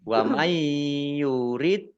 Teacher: nun sukun bertemu dengan huruf ya bacaan Idgham bighhunah masuk dengan dengung yaitu mendengung ya wurid Dal sukun bacaan qolqalah dibaca memantul ditampakkan